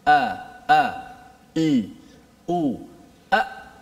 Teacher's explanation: Hamzah di mana? Di pangkal leher kita.